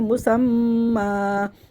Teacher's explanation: مسمن وقفی صورت میں دو زبر الف مدہ سے بدل جائیں گے، کھڑا زبر میں چینج ہو جائے گے، تو وقف ہم پڑھیں گے مسمّا مسمن مسمّا.